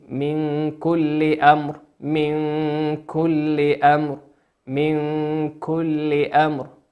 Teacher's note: نون ساكنة أتى بعدها حرف الكاف، والكاف من حروف الإخفاء